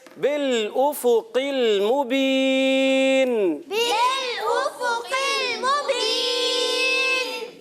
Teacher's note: लाम को हिलाना नहीं है, हमजा को खूब वाज़े करेंगे।